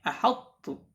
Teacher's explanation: Mutbaqnya, tidak hilang. Yang hilang adalah sifat qalqalahnya.